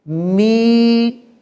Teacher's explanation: تو اس کی آواز ہوگی می اور آگے یا ساکن ہے، زیر کے بعد اگر یا ہو تو یہ یا مدہ ہوا کرتا ہے، یہاں میم کو تھوڑا سا ہم کھینچ کر پڑھیں گے